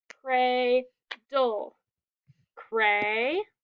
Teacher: We have two syllables, cradle, cray, and this is a long vowel because it's at the end of a syllable and it's an open syllable. And then we have DLE that says dull, cray, dull.